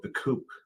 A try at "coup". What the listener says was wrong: The coup. Not our coops. Yes, but that's a silent P, dear. it's a coup.